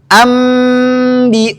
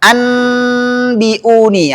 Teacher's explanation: maka bunyi nun di sini dirubah menjadi mim. Enggak boleh dibaca anbiuni. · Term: Iqlab, Iklab